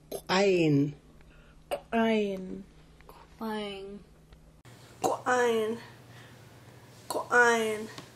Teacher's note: A Q with an apostrophe and a raised W is ejective. It's like the Q with a raised W, but ejected out of the mouth with a strong pop.